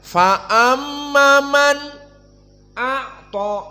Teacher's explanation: Di mana di sini diberhentikan sebelum masuk kepada hamzah, likai istidad, untuk persiapan makhraj hamzah yang tudib sangat dalam. Maka nunnya diberhentikan, kemudian baru membaca hamzah. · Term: saqt